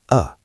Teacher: The schwa is a very weak vowel sound. It sounds like uh just a tiny bit of air.